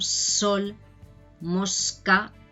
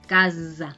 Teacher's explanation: cuando tenemos una S entre vocales, una S sonora, la acostumbramos a hacer como abeja